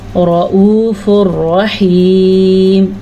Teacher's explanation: را آنے کی وجہ سے یہاں پہ ادغام بلا غنہ ہے، نون کی کیفیت ختم ہو جائے گی